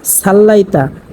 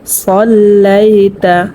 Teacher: এই সদটাকে মোটা করিয়া পড়তে হবে, কারণ হচ্ছে সদ হচ্ছে মোটা হরফ। অনেকেই কিন্তু এখানে পড়ে থাকেন সাল্লাইতা।